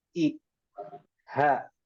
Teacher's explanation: Jadi huruf hamzah dan huruf ha itu letaknya dari pangkal tenggorokan. Nah, makanya ketika kita mengucapkan ihdina, ihdina, coba bergetar di pangkal tenggorokan. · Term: hamzah dan ha